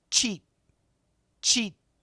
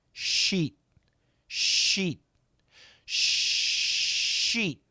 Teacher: the CH sound, the tip of the tongue touches, and we have an explosion. The SH sound can be really long. The tip of the tongue never touches.